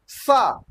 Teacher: नीचे वाले दांत के किनारे स जाके जीभ बैठ जा रही है। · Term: दंत स